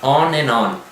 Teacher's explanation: Na hora da fala coloquial é bem an, né? O D não aparece e fica, né, esse som an. Então, digamos, vamos colocar aqui que a fonética entende o and como an, né?